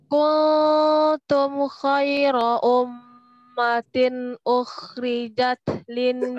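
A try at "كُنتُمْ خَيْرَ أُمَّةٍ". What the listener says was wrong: Enggak boleh manyun terus tadi. Kul enggak boleh manyun. Kuntum itu nunnya netral, enggak boleh manyun. Enggak boleh kuntum tapi kuntum.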